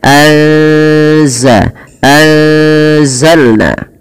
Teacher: samarkan suara nunnya kepada huruf Zai karena di sini ada bacaan Ikhfa yaitu kita menyamarkan nunnya kepada huruf Zal dan kepada makhraj daripada